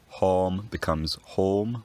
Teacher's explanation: going into the middle English period this vowel rounds and maybe raises a bit